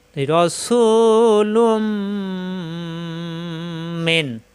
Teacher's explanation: তাসজিদ ধরে গুন্নাকারে মিলিয়ে পড়তে হবে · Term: ইদগামে বা গুন্না